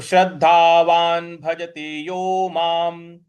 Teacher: कोई हलंत नहीं है तो यो को पूरा पढ़ेंगे यो माम म के ऊपर जो अनुस्वार है उसका भी उच्चारण हमें म ही ले आना है